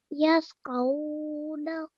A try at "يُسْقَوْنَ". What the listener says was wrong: Okay, ya has a dhamma. So yusqawna.